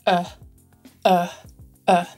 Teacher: this is called a schwa and it's pronounced like uh uh not r uh more at the front of the mouth and a relaxed mouth